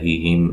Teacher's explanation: میم ساکن کا اظہار ہے، غنہ نہیں کریں گے